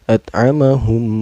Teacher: At'amahum, hum ini hukumnya idgham mislen karena ada mim sukun bertemu dengan huruf idgham mislen yaitu mim ya. Cara bacanya memasukkan sambil berdengung.